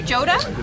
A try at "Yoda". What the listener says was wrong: I think it's pronounced Yoda. I think it's a soft J.